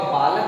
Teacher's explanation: अर्थात यही जो अ की ध्वनि सुनाई दे रही है आपके शब्द के उच्चारण करने के वक्त समय पर, तो क्या होगा, आप इससे पहचान पाएंगे कि इसमें कौन सा अकारांत इकारांत उकारांत में से कौन सा भेद है। तो जब आप बालक बोलेंगे तो क में अ की ध्वनि सुनाई दे रही है, तो इस प्रकार से आप यह समझ पाएंगे कि इसमें ह्रस्व अकारांत यानी ह्रस्व आकार की मात्रा लगी हुई है, छुपी हुई है।